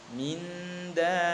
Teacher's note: nun mati bertemu dengan dal ini bacaan ikhfa, jadi disamarkan